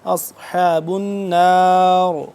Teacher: آخر میں را بھی موٹا پر کر کے پڑھیں گے